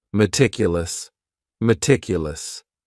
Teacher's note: very conscientious of her health the next word is meticulous and this word has four syllables and the stress is on that second syllable